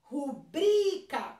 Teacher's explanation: Se eu falo rúbrica, o ru, que é a antepenúltima que parece mais forte. Então, na verdade, em rubrica, o bri é o meu mais forte. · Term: paroxítona